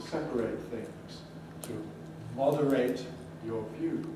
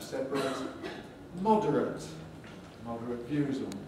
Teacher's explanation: in adjectives with the ending spelled ate, there are certain exceptions, but mostly it weakens to ut. So we have separate, moderate views on something.